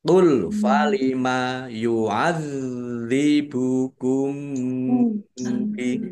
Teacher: Zalnya dibaca double, ada tasdidnya. · mim sukun bertemu dengan huruf ba, bacaan ikhfa safawi. Dibaca samar-samar.